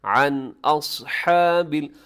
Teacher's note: نون ساکن کے بعد حمزہ ہے تو یہاں غنہ نہ کیجیے گا، تیزی سے پڑھیے گا اس کو ، عن اصحاب اس میں سواد موٹا پڑا جائے گا، ہا